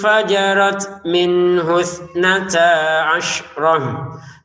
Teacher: Jadi ditahan ya samarnya. Fajarot, huruf ta'nya kita keluarin nafas sedikit ya. Fajarot min husnata asyrah.